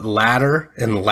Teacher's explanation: I feel like a lot of the T's are softened to D's